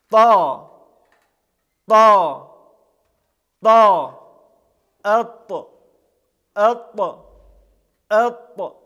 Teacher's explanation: затем язык отрывается от переднего небо и образуется этот смачный звук также он является звонким произносится с участием голосовых связок является лимфатическим то есть произносится с напряжением органов речи и подъемом · произносится с напряжением органов речи и подъемом задней части спинки языка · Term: Буква Та